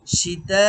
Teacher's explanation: সীতা, সীতা ই, এখানে আপনাকে ৪ আলিফ টান দিতে হবে। সীতার মধ্যে তা ৪ আলিফ টান হবে।